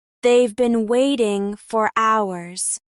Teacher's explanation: Can you hear how they have been becomes they've been? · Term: contraction